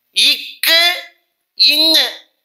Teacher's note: இக்கு இங்கு ஆகிய இரண்டு எழுத்துக்களும் நாவின் முதற் பகுதி அன்னத்தின் அடிப்பகுதியை பொருந்துவதால் உண்டாகிறது